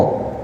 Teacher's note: Ini huruf istila ya. Jadi lidah dinaikkan supaya dapat huruf tebalnya huruf th. Huruf th ada di ujung lidah bertemu dengan langit-langit.